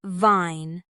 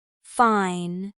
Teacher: Another common sound contrast is between V and F. For V, your top teeth touch your bottom lip and your vocal cords vibrate. For F, same position but no vibration.